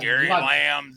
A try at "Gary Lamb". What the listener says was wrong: Lamb, no S.